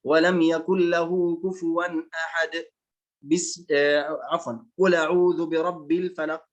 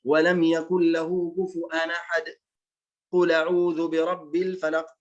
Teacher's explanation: الوجه الثاني السكت بلا بسملة، يعني لا يوجد عنده بسملة لكن يسكت